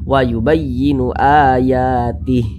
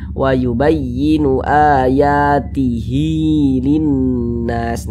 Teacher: kalau kita wasolkan, kita teruskan ya, dibaca panjang huruf H-nya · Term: mad silah qasirah